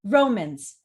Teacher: romans how many syllables does that have two and it's stressed at the very beginning